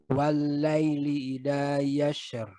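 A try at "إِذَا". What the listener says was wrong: Bukan ida. Ida. Idza. Hilangkan sundanya sedikit. Idza, bukan ida.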